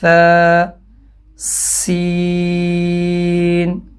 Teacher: سا کی آواز باریک اور نرمی سے ادا ہوتی ہے۔ اگر اس کی آواز کو تیز سیٹی کی طرح نکالا جائے تو سین کی آواز بن جاتی ہے، ث سین۔ اب اتنے سے فرق سے حرف چینج ہو گیا۔